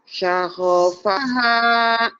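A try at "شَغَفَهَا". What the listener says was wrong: Sago, bukan saho. Shin. Syagofaha. Syagofaha. Go. Bu guru, gigi.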